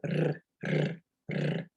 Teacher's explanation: the R sound in Spanish comes from the front of your mouth. So you put your tongue to the top of your mouth, just behind your teeth, and you roll your tongue